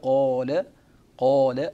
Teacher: القاف مفخمة مستعلية متصفة بصفات ست، ينبغي التركيز على صفاتها، ومن بينها الشدة، ومن بينها القلقلة، ومن بينها الجهر، وكل تلك الصفات هي صفات قوية.